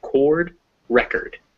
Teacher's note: But if we make it record, the o becomes a schwa because it's out of the stress position